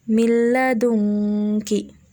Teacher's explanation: Cara membacanya yaitu dengan cara lafaz yang kedua huruf hijaiyah tersebut seakan-akan diberi tanda tasydid dengan tanpa diikuti dengan suara berdengung